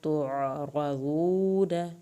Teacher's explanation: عین کو حلق سے پڑھنا ہے تو را کو پر کرنا ہے رضود نون کی زبر کو